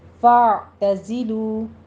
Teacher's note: زائی کی آواز سیٹی کی آئے گی، کسرہ باریک پڑھی جائے گی. · عین وسط حلق سے ادا کرنا ہے، اور اس کو فا نہیں کہنا، فا بس سٹاپ کرنی آواز.